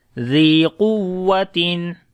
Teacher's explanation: The zal we read in soft sound and also we long due to ya madda.